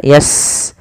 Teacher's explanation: Sin punya sifat namanya hamas, alirkan nafasnya yas. Kemudian taf, alirkan juga karena fa juga hamas.